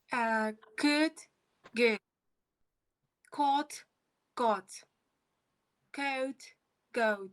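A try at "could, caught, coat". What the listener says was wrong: Yes, you should pronounce aspiration in the first column. For example, cot, coat, cave. You see, you should hear the sound.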